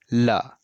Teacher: जो ल है वो दंत से बोला जाता है।